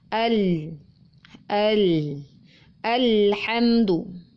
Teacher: tebal tetapi ini bukan waktu lelah maka alamnya pasti dibaca tipis ujung lidah menempel pada langit-langit bagian depan jadi ujung lidah tekan dan menempel sehingga sebagian suaranya tertekan di posisi ujung lidah tersebut